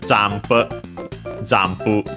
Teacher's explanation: the n before the pu becomes m